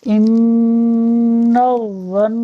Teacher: 2 دفعہ نون مشدد آ رہا ہے تو دونوں ہی جگہ غنہ کریں گے